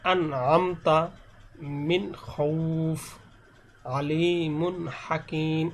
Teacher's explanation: যেমন এখানে এরকম ভাবে গুণ্য করা যাবে না, আন আমতা মিন খৌফ, আলিমুন হাকিম, এরকম আলিমুন, অর্থাৎ এখানে কোনো গুণ্য হবে না। স্পষ্ট বলতে এখানে গুণ্য হবে না, গুণ্য ছাড়া স্পষ্ট করে পড়তে হবে। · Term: ইজহার